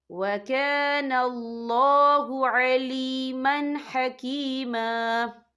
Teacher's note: رہا ہے، اور ہا جو ہے حروف ہلکی کا ورڈ ہے، تو ہم یہاں اظہار کریں گے، ہم اسے بنا غنہ کے پڑھیں گے۔